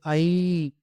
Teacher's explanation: இந்த ஐய நம்ம தனியா சொல்லும்போது ஐ அப்படின்னு சொல்லுவோம். இரண்டு மாத்திரை அளவு குறையாமல் ஒலிக்கும்.